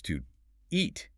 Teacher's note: The to becomes just a T sound attached to eat.